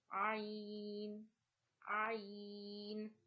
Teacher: Ain is pronounced from the middle of your throat.